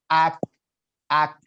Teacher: Hames itu artinya ada hembusan, ada kebocoran, jadi ada angin keluar dari mulut kita. Ak, ak. Cuman sedikit aja, nggak usah dipaksa.